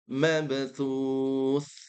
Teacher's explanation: Tha ini kuncinya ujung lidah bertemu dengan gigi seri atas atau digigit. Mabthus. Langsung thu-nya dhammahnya digigit.